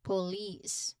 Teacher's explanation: So remember um you say it as police. So the second syllable is the stressed part here.